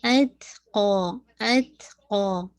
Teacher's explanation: کیجیے گا، اتقا، اتقا، ٹھیک ہے، قاف کو 2 کاؤنٹ، اور میک شور تا پہ ہمس بھی ہوگا اور شدہ بھی ہوگا